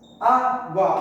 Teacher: Semivogal, vogal, terminou de ditongo, na mesma sílaba. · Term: ditongo crescente